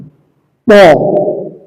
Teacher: জিহ্বার আগা সামনের উপরে দুই দাঁতের গোড়ার সঙ্গে লাগিয়ে উচ্চারিত হয়।